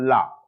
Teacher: ला सामने से नहीं, इधर से हवा निकलती है, साइड से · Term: पार्श्विक व्यंजन